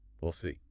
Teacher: The W and E sound of we can almost totally vanish.